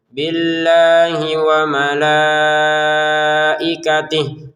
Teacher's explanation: Untuk billahnya kita panjangkan dua harakat langsung ke wau ya.